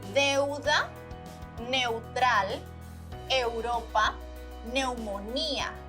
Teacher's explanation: For this diphthongo, the vowels don't combine as much. You can clearly hear the two vowels in the pronunciation.